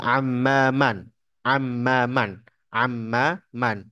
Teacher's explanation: Amma dengan tasdid harus lebih jelas gunahnya dua ketukan